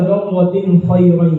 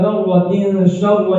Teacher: تنوین سے خواہ کی طرف انتقال بلا کسی تاخیر کے سرعت کے ساتھ ہوتا ہے